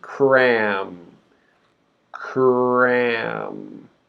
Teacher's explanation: as we're making the K sound, we're already starting to make the R sound. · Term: consonant cluster